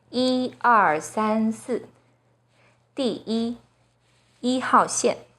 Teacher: When 一 is used as a number, it's the 1st flat tone